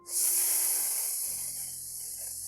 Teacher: Pronuncie aí um som de S contínuo. O único som que conseguimos ouvir é o do ar chiando entre a língua e o céu da boca